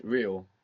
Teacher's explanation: When we have an R at the beginning, you might hear it like a rolling R.